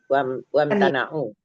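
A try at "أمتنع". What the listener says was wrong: Jangan pakai wa lagi.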